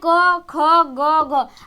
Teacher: कंठ का उच्चारण स्थान है क, ख, ग, घ